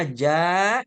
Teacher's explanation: harus empat atau lima harakat karena ada Hamzah dalam satu kata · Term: mad wajib